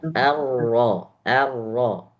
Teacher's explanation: Ro-nya jangan sampai banyak terjadi getaran.